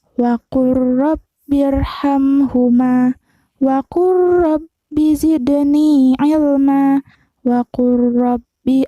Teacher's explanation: Ada huruf lam sukun menghadap huruf ro, maka lamnya tidak dibaca, melainkan langsung ke huruf ro. Contoh, waqul rabbi, bukan waqul robbi, tapi langsung ke huruf ro-nya.